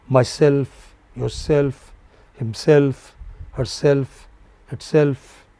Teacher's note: All words ending in self take a stress on self.